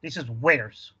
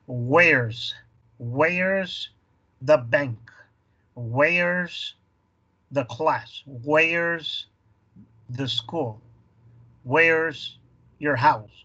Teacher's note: Se elimina la primera sílaba y la primera letra de is, ¿verdad? Y nomás te quedas con el sonido de la S.